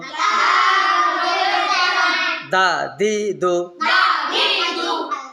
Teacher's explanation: জিহ্বার আগা, সামনের উপরের দুই দাঁতের গোড়ার সঙ্গে লাগাইয়া উচ্চারিত হইবে ত, দাল, তা। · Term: 11 নম্বর মাখরাজ